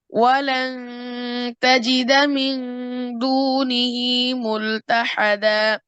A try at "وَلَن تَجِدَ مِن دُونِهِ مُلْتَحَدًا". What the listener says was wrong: ইকফা গুণনা করার সময়, ইকফা গুণনা করার সময় কি হবে না, নুনের উচ্চারণ হবে না, দুনি। ঠিক আছে, ওয়ালান তাজিদা, নুন হিডেন থাকবে।